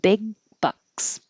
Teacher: You won't hear that G. So hold. Big bucks.